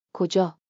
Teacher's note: Round the A, like in, spa.